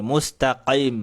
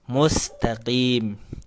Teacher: Harusnya langsung mustaqim, langsung nyengir. Yang berikutnya adalah mengeluarkan huruf qaf itu dari jakun.